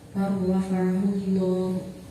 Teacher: Di situ ada huruf lam bertemu dengan huruf ra, dua huruf yang berdekatan makhraj dan sifatnya, huruf pertama mati dan huruf kedua hidup, maka cara bacanya didengungkan. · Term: idgham mutaqarribin